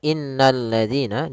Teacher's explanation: Alif lam yang kita tulis tapi tidak dibaca, sehingga kita langsung baca ke huruf lam yang ketiga, yaitu berupa lam tasydidnya. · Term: alif lam syamsiyah